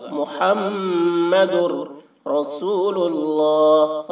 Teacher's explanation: میم میں تشدید ہے، میم میں غنہ ہوگا